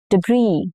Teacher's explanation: since this is borrowed from French, the final consonant, which is letter S in this case, often goes silent.